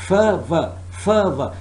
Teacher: These are labiodental sounds because we are touching the upper teeth with the lower lip. And the lower lip is approaching the upper teeth.